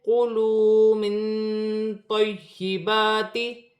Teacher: نون ساکن میں اخفا ہوگا۔ اخفا کا مطلب ہے ناک میں آواز کا چھپانا، چھپا ہوا غنہ کرنا